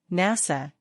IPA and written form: ˈnæsə (NASA)